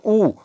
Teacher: ऊ कहने से क्या होता है, ओठ देखिए गोलाकार शेप बन जाता है, तो कहने का मतलब क्या हो जाएगा आपका ओष्ठ, इसका उच्चारण स्थान हो गया।